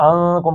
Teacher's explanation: اغنی، اغنی عنکم، عنکم اس کو آپ نے اخفا کرنا ہے، عنکم غنہ یا نون ناک سے نکالنا ہے، زبان تالو سے